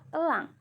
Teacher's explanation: e kecil bunyi Tengah sedang sentral dan tidak bulat